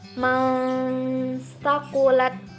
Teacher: Jadi disamarkan juga disertai dengan dengungan ketika ada nun mati bertemu dengan ta. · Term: ikhfa hakiki